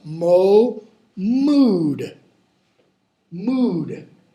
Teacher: the vowel changes it's one of those long vowels it jumps up